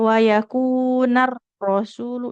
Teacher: satu huruf ro itu getarnya nggak boleh terlalu banyak ya. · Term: takrir